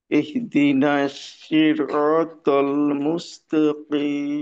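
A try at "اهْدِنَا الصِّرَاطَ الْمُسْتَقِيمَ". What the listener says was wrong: জি, সদের উচ্চারণটা কিন্তু শিনের মতো হয়ে গেল। না, আপনার উচ্চারণটা শিনের মতো বোঝা গেছে অনেকটা।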